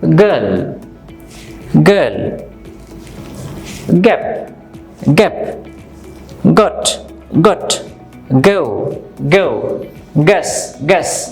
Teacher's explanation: the back of your tongue will go up and you will use your voice to produce this sound. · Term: go sound